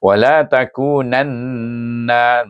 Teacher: Baca dengan wajibul ghunna dengan dengung dua harakat